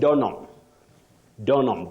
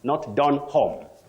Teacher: you say donam donam blessings you say donam not Don home that H is not articulated or pronounced